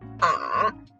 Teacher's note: the third tone is the falling rising tone